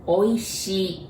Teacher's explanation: So it kinda eliminate the sound i but you prolong the shi.